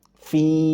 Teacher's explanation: Perhatikan ada fi yang setelahnya ada ya sukun maka dia mad dibaca dua harakat fi hanya dua harakat jangan sampai dipanjangkan lagi.